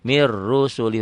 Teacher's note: ro-nya tebel, su-nya kosar pendek, li-nya kosar, hi-nya kosar. Kosar jadi pendek kalau dihentikan.